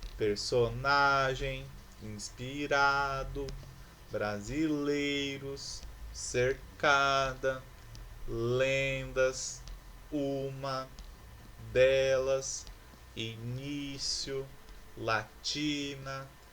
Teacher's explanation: Todas essas palavras possuem a penúltima sílaba como sílaba tônica. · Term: paroxítonas